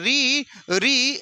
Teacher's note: जब ऋ का उच्चारण करते हैं तो जो हमारी जीहवा है जो हमारी जीभ है वो किसको टच करती है? मूर्धा को टच करती है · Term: र का साउंड